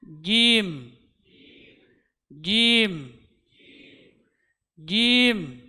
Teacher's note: Jadi tidak boleh ada udara yang keluar ketika mengucapkan huruf jim.